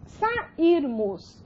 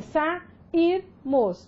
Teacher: A sílaba tônica da palavra é a penúltima, né? Então, você tem o ir.